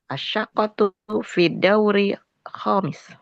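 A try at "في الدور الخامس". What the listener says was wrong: Fiddauril. Di sini ada tasdid ya. Fiddauri. Jadi fi-nya masuk ke dal.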